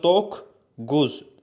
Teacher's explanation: Doqquz sözü kök daxilində gəlib. Tələffüzdə olacaq doqquz. Yəni k-ya keçir.